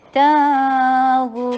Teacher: ہونٹوں کو گول اور را ہیوی، رون، را کو بھی ہیوی، یہ مد عارض للسکون ہو رہا ہے، 4 حرکہ لانگ لمبا کیجیے